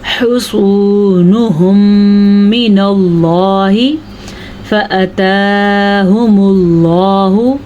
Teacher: اللہ کا نام پر پڑھنا ہے کیونکہ اللہ کے نام سے پہلے زبر ہے